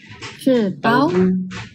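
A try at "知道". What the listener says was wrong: Bunyi keempat. Tao. Tapi tadi ada kurang sikit ya.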